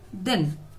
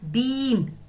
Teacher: एक मात्रा के समय में एक शब्द है, वो है दिन, लेकिन बड़ी में हमने कितने मात्रा का समय लगाया, दो मात्रा का, तो क्या हो जाएगा, दीन।